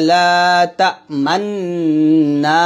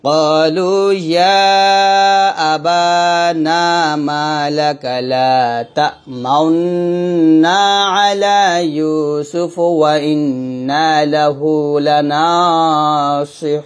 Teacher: এখানে নিয়মটা হচ্ছে এই যে মান্না, এই যে ওয়াজিব গুন্নাটা আছে, এখানে ডাইরেক্ট লা ক্বালু ইয়া আবানা মা লাকা লা তা'মান্না, এরকম বলা যাবে না। এই যে গুন্নাটা যখন আমি আদায় করব তখন ঠোঁটটা গোল করতে হবে, এটাই মূলত ইসমাম। তো গোল করলে এরকম হবে উচ্চারণটা, قالوا يا أبانا ما لك لا تأمنا على يوسف وإنا له لناصحون।